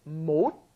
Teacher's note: Originally, it's 못, which is unaspirated, just a closing D sound, 못, right? But then when it comes up against an H, it becomes aspirated.